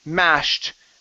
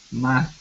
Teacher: This ed will sound like a T. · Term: ed ending